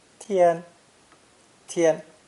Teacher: This character is pronounced with a high and flat first tone. 天, 天. Again, we see the stroke order rule of horizontals before verticals.